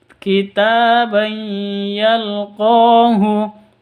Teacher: Tanwin bertemu dengan ya. Cara bacanya masuk ke ya disertai dengung 2 ketuk.